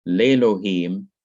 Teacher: This is a quiescent letter, so everything connected with it disappears, leaving le lohim, but this has to be adjusted because of the silencing of aleph and the silencing of the composite shua. This short e, segol, has to be lengthened to long e, which is sire, which is an a sound, like the e in eight or the e in wait. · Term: long E sound